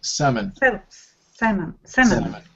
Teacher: This word, the L is silent.